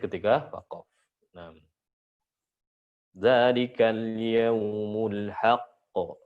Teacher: Qalqalah bertasydid ketika waqaf.